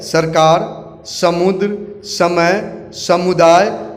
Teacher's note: इसका मुख्य कारण है जब जुबान दांत से मिलकर इस स का निर्माण करता है